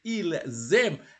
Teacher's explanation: you have to join the S with the vowel of the verb to aimer, you see, because it starts with a vowel.